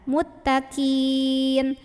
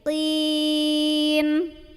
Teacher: Kalau huruf qaf pangkal lidahnya harus naik. Kalau tadi kin pangkal lidah nggak naik.